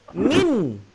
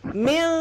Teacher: Kalau kita bunyi min, ini lidah, dia akan menyentuh langit. Min. Tapi ketika ifa' hakiki, dia tergantung.